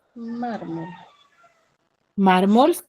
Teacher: mármol tiene la mayor fuerza de voz en la penúltima sílaba